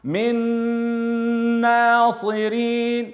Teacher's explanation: النون عند النون ويسمى ادغام بغنه